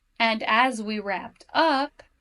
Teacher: there's a new idea being introduced. So my intonation goes up.